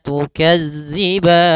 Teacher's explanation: Tapi alangkah itu biar tidak panjang, tidak terlalu panjang, yaitu 6 harokat, tidak terlalu pendek 2 harokat, yaitu 4 harokat yang tengah-tengah. Maka tukadziban 4 harokat saja. Baru dimatikan nunnya dengan sempurna. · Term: mad arid sukun